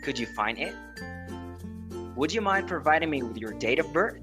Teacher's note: Notice how intonation rises at the end. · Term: rising intonation